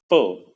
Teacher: both the lips of the speaker come together to form an obstruction in the path of airstream. On the other hand, when one pronounces the vowel the lips are fairly open and the airstream passes out of the mouth with almost no resistance. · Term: consonant p